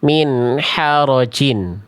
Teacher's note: Yang B itu dia keluar nafas, dia becek.